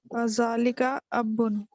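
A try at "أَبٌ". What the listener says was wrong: ये इसके ऊपर तशदीद ना पड़ा करें, ठीक है? अबुन. अब्बू जो होता है ना तशदीद के साथ उर्दू में होता है अब्बू. अबुन. अबुन.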